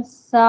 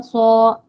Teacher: सीन जबर सा होता है और स्वाद जबर सो